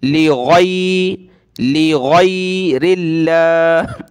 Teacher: اس کی جگہ آپ لغیر اللہ نہیں پڑھ سکتے، بہت سارے اس کو گئی پڑھتے ہیں، گاف جو ہے عربی میں نہیں ہوتا، غین نکالیں گلے سے